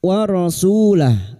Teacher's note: Su dhammah diikuti wawu sukun 2 harakat matabi'i